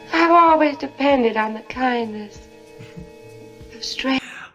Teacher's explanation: You hear how there's no R in strangers? Strange. That's a non-rhotic accent.